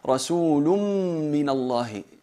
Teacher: Eliminamos el cuerpo de la nun, la fusionamos el tanwin en la mim, se convierte en una mim con shadda y hay que aplicar al gunna. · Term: Fusión con gunna